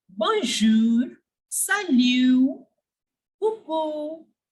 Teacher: I have not pronounced the T. The T was completely silent because it doesn't come in careful.